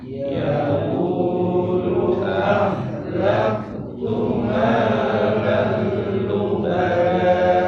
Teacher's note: Lam ada tanwin fathah ketemu lam idgham bila guna masuk tanpa dengung